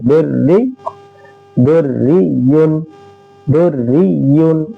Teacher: रा मुशद्ददा पर ज़ेर हो तो भी रा बारीक होती है।